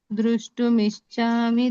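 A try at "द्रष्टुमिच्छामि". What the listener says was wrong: ಮೂರನೇ ಲೈನ್ ದ್ರಷ್ಟುಮಿಚ್ಛಾಮಿ, ಧ್ರುವ ಇಲ್ಲ, ದ್ರ.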